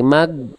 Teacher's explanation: Jadi, gin itu bukan g. Kalau ee teman-teman menganggap gin adalah g, jadi nanti dia suaranya terputus pasti mag.